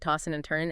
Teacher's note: Tossing and turning, you often drop the G sound, right? Tossing and turning, and the D and N might blend. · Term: G dropping